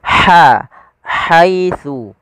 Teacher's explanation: Dan huruf ha ini memiliki sifat hames. Makhrajnya dari tengah tenggorokan kita.